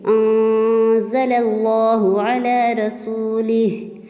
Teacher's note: ہماری آواز ناک میں تو جائے گی لیکن ہماری زبان منہ کے درمیان میں اٹک جائے گی، ہم پوری یعنی کی طرح سے اس کو اوپر ٹچ نہیں کریں گے۔ انزل اللہ علی رسولہ، ایسے کر کے ہم نے اس کو اچھے طریقے سے پڑھنا ہے۔ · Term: اخفا